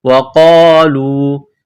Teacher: واو کو پڑھتے وقت ہونٹوں کو گول کرنا ہے، قاف کو موٹا کرنا ہے، قاف الف زبر قا، لام واو پیش لو۔